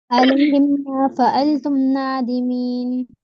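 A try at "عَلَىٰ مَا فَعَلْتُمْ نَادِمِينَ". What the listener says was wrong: علیہم نہیں، علا ہے، علا ما فعلتم.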